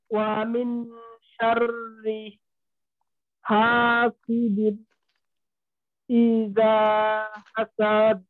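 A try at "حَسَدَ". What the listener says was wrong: সাদ লম্বা হয়ে গেল না, সাদ এমনটা।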